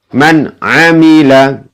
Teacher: dibaca jelas ya karena nun sukun bertemu dengan ain ya